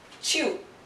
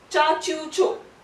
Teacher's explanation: Chi plus ya, ideally it would be chia, but when you combine it becomes cha.